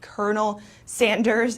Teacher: So here, the L sound is not pronounced at all. It is, it turns into an R.